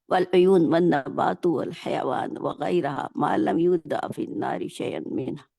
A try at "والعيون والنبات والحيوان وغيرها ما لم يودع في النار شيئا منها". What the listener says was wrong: ذرا سا سپیڈ کم کریں گی نا تو اور اچھا پڑھ لیں گی انشاءاللہ، جلدی نہ کریں، ٹھیک ہے۔ دیکھیں یہ اوپر پہلی لائن میں دیکھیں، نارو فہیا مذہبتو یا مذہبتن، ٹھیک ہے۔ اب پھر آگے جو ہے نا الارض من المنافعی، من المنافعی،